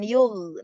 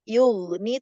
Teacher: pangkal lidahnya dia tebal karena gin itu huruf istilla